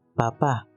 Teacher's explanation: Es una parada bilabial sin voz